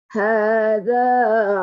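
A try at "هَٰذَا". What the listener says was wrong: Hadza dah betul. Za tu rendah lagi.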